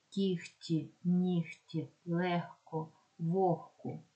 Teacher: буква г уподібнюється до х